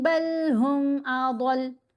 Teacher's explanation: ضاد کو موٹا پڑھیں گے، لام کو ساکن کریں گے